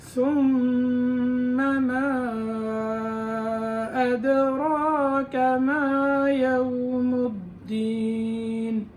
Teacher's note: ثم کی میم میں غنہ کیا مشدد ہونے کی وجہ سے